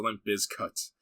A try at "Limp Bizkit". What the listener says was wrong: Bizkit. The emphasis is on biz, but yeah, it's not bis.